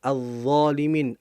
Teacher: Az-zalimin, az-dha. Lamnya nggak jelas tapi langsung masuk ke huruf dha-nya.